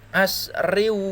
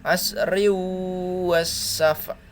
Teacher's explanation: Riu, masuk di wawunya, bukan asrin wa, bukan, tapi masuk dengan berdengung. Asriu wasafa.